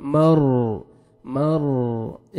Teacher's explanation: रॉ साकिन से पहले जबर है रॉ को आपने पुर करना है मर मर एक जगह पे आपने जबान को रखना है मर